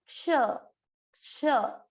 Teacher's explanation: केवल श नहीं बोलना, आधा क आना चाहिए, ये ध्यान देना है।